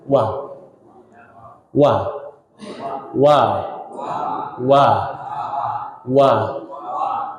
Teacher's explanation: antara dua bibirah ini benar-benar dua bibir atas dan bawah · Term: huruf wa